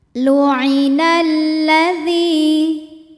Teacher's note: Lam tasydid terdiri dari dua lam, lam sukun dan lam fathah. Lam yang sukun tidak dibaca, kita baca langsung ke lam fathah, maka disebut dengan idgham syamsi.